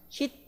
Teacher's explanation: hit 하면은 t 사운드로, 즉 이게 unrelease, 이제 딱 이제 그 이 공기가 멈추는 그런 이제 그 소리로 날 것이고